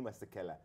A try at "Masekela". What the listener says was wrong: Okay, the proper pronunciation is Masekela. Ki, ki, not ke, ki. And you have to smile there. Masekela.